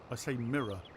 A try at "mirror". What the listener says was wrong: Okay, not for anything. There's not an A at the ends of the word. You say mirror. There's no A at the end of the word.